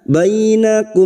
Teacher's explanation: Fathah bertemu ya sukun kita lunakkan.